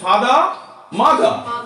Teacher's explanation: আর কোন ভাওয়ালের পরে যদি আর থাকে, এই আরটা সাইলেন্ট থাকে, আ হয়ে যায়।